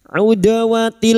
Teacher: Dal sukun yang mati asli di tengah kalimat qalqalah sugra.